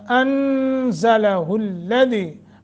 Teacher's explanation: نون ساکن کے بعد زا ہے، لمبا کریں گے یعنی اخفا